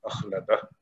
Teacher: اگر وقت کریں گے تو یہاں پہ صرف ہا ساکن کی آواز نکلے گی، اخلدہ ہو جائے گا.